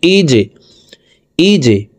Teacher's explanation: হামজাহ জিম জের ইজে, জিম কলকলার হরফ, নিচের দিকে ধাবিত করে ধাক্কা দিয়ে উচ্চারণ করব।